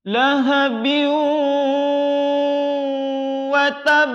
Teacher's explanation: yakni memasukkan bunyi bin ke dalam huruf waw, sehingga ketika kita menyebutkan di kata biu itu wajib harus dimasukkan ke khusyum, rongga hidung. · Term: bi gunnah